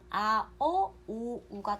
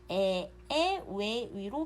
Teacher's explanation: 뒤음절의 이모음에 앞 음절의 후설 모음 아, 어, 오, 우가 동화가 되어서 그대로 조음 위치가 전설이 되어서 에, 왜, 위로 바뀌는 거예요. 우리가 모음 체계표를 그때 배울 때 거기 그 후설 모음에 그 이모음을 하나씩 그으면 그대로 전설 모음이 되거든요. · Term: 이모음 역행 동화